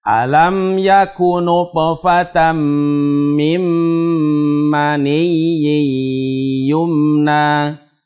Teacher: Mim maniyyin. Dipanjangkannya yang kedua, maniyyin. Yang pertama hanya ditasydid saja, ditekan.